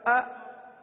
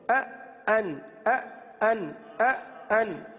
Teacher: حمزہ کس طرح ادا ہوتا ہے؟ تحقیق کے ساتھ اور شدت کے ساتھ